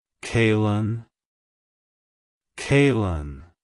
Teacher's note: emphasize the first syllable, K-A-Y, and then blend it smoothly with the second syllable, Lin.